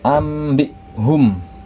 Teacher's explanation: mengganti huruf nun mati atau tanwin menjadi huruf mim mati disertai dengan dengung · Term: iqlab